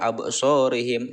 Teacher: Dibaca terang dan memantul, bunyi pantulannya kecil, berada di tengah ayat. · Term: qalqalah sugro